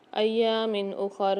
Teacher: ایام اخر، یہاں میم کے نیچے 2 زیر ہیں، 2 زیر کی تنوین کے بعد حمزہ آ رہا ہے، اظہار حلقی کے 6 حرفوں میں سے یہاں بھی غنہ نہیں کریں گے، اظہار کر کے پڑھیں گے